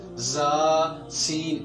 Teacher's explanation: زا اور سین کے ادا کرتے وقت زبان کا درمیان اوپر کی تالو کی طرف نہیں اٹھتا بلکہ نیچے ہی رہتا ہے، جس کی وجہ سے زا اور سین باریک رہتے ہیں۔ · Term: انفتاح